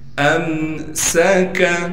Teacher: امسک، حمزہ کو میم سے ملانا ہے بغیر غننے کے، سین پر سیٹی نکال کر پڑھنا ہے، کاف کو باریک کر کے پڑھیں گے